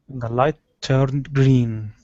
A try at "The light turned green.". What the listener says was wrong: Okay, watch that R in the middle instead of turned. Turned. The light turned green. Focus on that R right in the middle of the word turned.